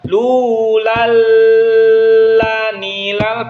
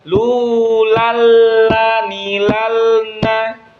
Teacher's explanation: Harusnya lulalanilalna gitu ya. Jadi ketika tanwin jangan ditahan karena dia bukan dengan gunnah tapi tanpa gunnah. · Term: idgham bila gunnah